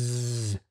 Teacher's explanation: the tip of the tongue is approaching the alveolar ridge, and there's just enough space right there where the air is coming out. And that's what causes that s, that z as well.